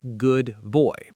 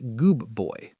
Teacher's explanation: The D sound in good shifts to a B sound because of the B in boy. It's just easier to say >> precisely. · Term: assimilation